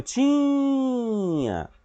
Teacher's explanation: esse ti aí, ele é a sílaba tônica